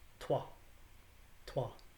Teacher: in middle english we're going to pronounce that w and the o is not going to be pronounced ooh it's going to be pronounced ah and so the word two is pronounced tua tua right consonant